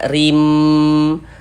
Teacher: Bunyi tanwinnya ini dimasukkan ke huruf mim, sehingganya kita baca rim. Jangan dibaca rin, tapi dibaca rim, masuk melebur ke huruf mim, rim. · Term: idgham bi gunnah